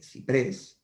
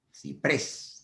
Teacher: Ciprés tiene la sílaba tónica en la última sílaba.